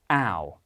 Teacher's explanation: In contemporary British English, the vowel starts more front in the mouth. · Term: mouth vowel